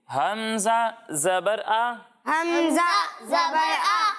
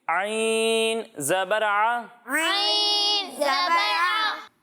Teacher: جب ہم حمزہ کی ادائیگی کریں گے تو اسے حلق کے نچلے حصے سے پڑھیں گے، اور جب ہم عین کی ادائیگی کریں گے تو اسے حلق کے درمیانے حصے سے پڑھیں گے